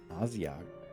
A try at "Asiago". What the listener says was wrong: Can you stop replacing your S's with Z's?